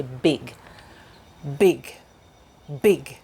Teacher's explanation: big is voiced so we use our voice box so the paper shouldn't move very much